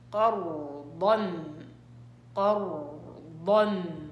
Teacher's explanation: القاف قلقلة على الساكن، دائما القلقلة على وضع الساكن